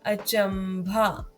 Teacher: भ से पहले अनुस्वार आया है और भ भी प वर्ग का अक्षर है, इसलिए अनुस्वार की ध्वनि है म